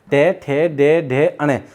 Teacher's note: ये तो आपके 5 वर्ण है, व्यंजन है जिनका उच्चारण स्थान मूर्धन्य है